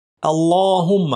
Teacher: আল্লাহ মোটা করে লাম